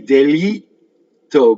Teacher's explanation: So here's your double T, delitto. Go up to the T, don't say it, and then you have your double T.